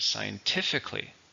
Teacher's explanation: it has 4 syllables, stresses on the third,